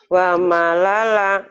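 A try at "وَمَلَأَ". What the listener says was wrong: Wa mala'a, ini nggak mungkin alif. Wa mala'a, nggak mungkin lam, ini alif ya Bu ya.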